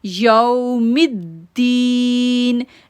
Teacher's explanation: یو پڑھیں گے کیونکہ لین لیٹر ہے، نہ تو جھٹکا دیں گے اور نہ ہی جلدی پڑھیں گے، نرمی کے ساتھ پڑھیں گے